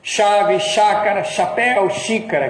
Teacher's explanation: Então existe um S palatal, que é igual ao nosso X.